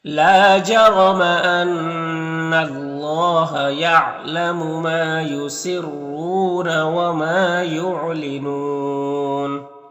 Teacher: لام الف مدہ ایک الف کو برابر کھینچیں گے، را کو پر زبر، را کو پر پڑھیں گے۔ ان نون مشدد غنہ ہوگا، پر اللہ کے لام سے پہلے نون کو پر زبر تو اللہ کے لام کو پر پڑھیں گے، کھڑا زبر ایک الف کو برابر کھینچیں گے۔